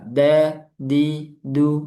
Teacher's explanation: Jadi, dal itu jahar, tidak keluar udara.